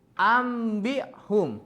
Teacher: mengubah nun mati atau tanwin menjadi bunyi mim dengan disertai dengan dengung guna apabila bertemu dengan ba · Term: iklab